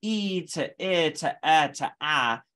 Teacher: your tongue is actually moving back in the mouth so it's getting further and further back and that is causing the second formant to drop over the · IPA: [i] [ɪ] [ɛ] [æ]